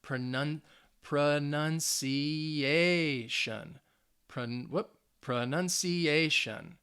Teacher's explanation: you should hear it on that fourth syllable because it's the second to last syllable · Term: stress